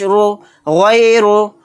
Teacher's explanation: را کے اوپر پیش آ گئے تو را کو موٹا یعنی پر پڑھیں گے